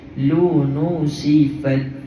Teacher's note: Bunyi bisikan angin pada huruf ta. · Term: hams